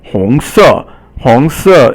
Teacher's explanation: 红 is second tone and it means red. 红 色 红 色 is second tone and then fourth tone. 红 is second, 色 is fourth tone.